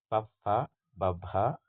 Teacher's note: ತುಟಿಗಳ ಸಹಾಯದಿಂದ ಹುಟ್ಟುವ ವರ್ಣಗಳನ್ನು ನಾವು ಓಷ್ಠ ಧ್ವನಿಗಳು ಅಂತ ಕರೀತೀವಿ